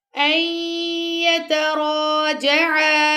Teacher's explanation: نون ہم نے یہاں پہ نہیں پڑھنا، نون کو ہم نے اسکپ کر دینا یہاں سے۔ اور ویسے تجوید کا رولز یہ ہے کہ نون ساکن کے بعد اگر حرف غیر ملون میں سے کوئی لیٹر آتا ہے تو وہاں پہ ادغام ہوتا ہے۔